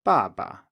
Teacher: falling tone the fourth tone the neutral tone is again low but here we can't really go lower because the falling tone actually ends very low